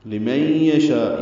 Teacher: من میں ادغام ناقص ہے، غنہ ہوگا، آواز ناک کے پاس سے ملے جائیں گے